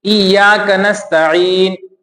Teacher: جیسے ایاک نستعین، تو نستعین میں جو سین ہے یہ کیسے نکلا ہے؟ جب ہم نے زبان کی نوک کو دونوں دانتوں کے کنارے سے جب ہم نے ملایا تب اس سے سین کی آواز نکلی